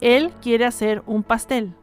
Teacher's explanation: Now let's combine the consonant H with the vowels, and you will notice that the H is totally silent. Therefore, you will only hear the sound of the vowels.